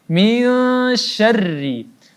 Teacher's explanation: Kemudian huruf ra-nya huruf tipis maka kita baca tipis karena dia berbaris bawah.